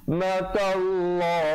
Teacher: Dan lafzul jalalah datang sebelumnya baris fathah. Ta baris fathah dibaca tebal dua harakat.